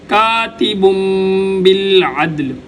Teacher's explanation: تنوین کے بعد اگر با آ جائے تو یہاں پر تنوین کو میم کے ساتھ ملا کر پڑھتے ہیں۔